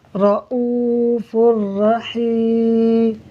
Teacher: ہم فا کو را سے ملا کر پڑھیں گے بغیر غننے کے، اور ادغام کا مطلب ملانا ہوتا ہے، تو ہم یہاں فا کو را سے ملا کر بغیر غننے کے پڑھیں گے۔